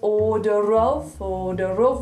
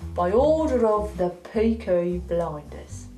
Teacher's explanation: By order of, see how we link those words: order of. Order of. With the little tapped.